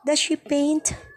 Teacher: Your answer is a rising intonation.